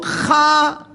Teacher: அது நெஞ்சு பகுதியிலிருந்து அந்த சத்தம் வருது அப்ப அதை நாம தொண்டையினுடைய அடிப்பகுதி என்று சொல்வார்கள்